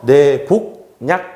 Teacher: 약이라는 것이 야로 시작하기 때문에 니은이 첨가돼서 내복약 이렇게 돼요. 그런데 이 친구랑 이 친구가 만나면 비음화가 생기기 때문에 이 기억이 이렇게 이응으로 바뀌어서 내복약 이렇게 됩니다.